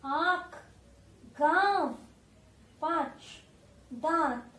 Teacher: जब अ के ऊपर चंद्र आ जाता है तब हम उसे कहते हैं अनुनासिक। इसे नाक और गले दोनों से बोला जाता है। नाक से भी और गले से भी इसका साउंड निकलता है।